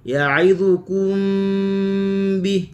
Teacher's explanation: mim mati bertemu dengan ba, ikhfa syafawi